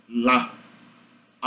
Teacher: Qual o nome científico do som da letra L? É uma lateral aproximante alveolar